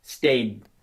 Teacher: I'm doing the same thing with my tongue and my lips, but I'm keeping the vibration a little longer to emphasize that it's stayed and not state.